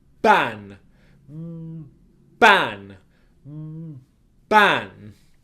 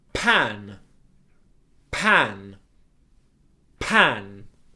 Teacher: For P, pan, pan, pan. So for B and for P, my lips are in exactly the same position. Both sounds are plosive, it's an explosion out.